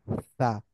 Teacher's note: teeth and let air pass gently আমাদের জিহ্বাটা একটু বাইরে রাখবো আমরা উপরের দাঁতের সাথে টাচ লাগিয়ে একটু বাইরে রাখবো তা এরপরে আলতো করে যাতে বাতাস বের হয়ে যায় তা আপনারা